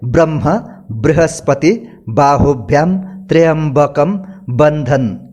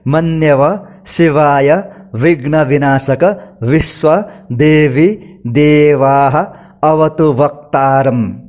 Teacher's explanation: ब और व यानी कि होठों जोड़कर और होठ और दंत जोड़कर जो उच्चारण होता है, ये इसमें बहुत पार्थक्य है। इसलिए व का उच्चारण हमेशा होठ और दांत प्रयोग करके ही करना चाहिए।